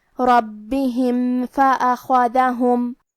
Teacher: فا حروف الاظہار الشفوی میں سے ہے تو ہم میم ظاہر کریں گے اور بغیر غنہ سے یہ حکم کو ادا کریں گے